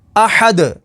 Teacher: وقف تام کی وجہ سے دال کو ساکن کر دیں گے، دال حروف قلقلہ میں سے ہے تو یہاں پر قلقلہ ہوگا